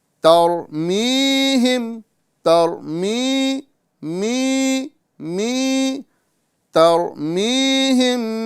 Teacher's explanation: جی ہاں، تو یا ساکن ما قبل زیر، یعنی اس کے پہلے جو ہے زیر آ جائے تو یہ یا مدہ بن جاتی ہے، اور یا مدہ کو ایک الف کے برابر کھینچ کر پڑھنا ہے، اور اس کو کھینچنے کی مقدار بتائی گئی کہ آپ مٹھی کو بند کر لیجئے اور نارمل انداز میں اس طرح اس کو کھولیے، نارمل انداز میں۔